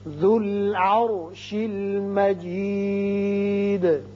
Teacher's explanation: ذال کی پیش لام سے ملے گی. را ساکن ہے لیکن پہلے زبر ہے اس لیے اس کو پر پڑھیں گے